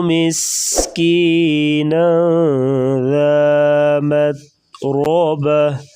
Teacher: مس سیٹی جیسی آواز نکالیں گے، نون کے اوپر اخفا ہوگا، مت تا کو باریک پڑھیں گے اور را کے اوپر زبر ہے تو را کو موٹا پڑھیں گے.